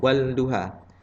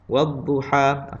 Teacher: Maksud dia kita tak baca pada huruf lam, terus masuk kepada huruf dad. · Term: alif lam syamsiah